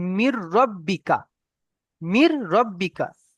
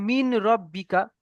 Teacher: নুন সাকিনকে রর সঙ্গে মিলিয়ে বিনা গুণনায় জাহির করে পড়তে হবে। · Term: ঈদগামে তাম